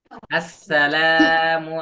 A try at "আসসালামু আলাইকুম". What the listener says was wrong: কিন্তু লামে টান হচ্ছে না।